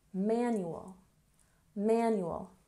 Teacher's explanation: We stress the first syllable.